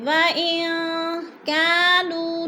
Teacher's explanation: وَإِن كَانُوا مِن قَبْلُ لَفِي ضَلَالٍ مُبِينٍ۔ وَإِن، نون ساکن کے بعد کاف آ گیا ہے تو ادھر اخفا ہو رہا ہے، آواز کو ناک میں چھپا کر پڑھیں گے